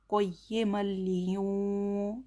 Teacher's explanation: नून साकिन की आवाज़ को नाक में छुपा कर पढ़ेंगे, क्योंकि नून साकिन के बाद ज़ाल आया है। क़य्यिमल लियूं, ज़ाल ज़ेर ज़ी, क़य्यिमल लियूं ज़ी।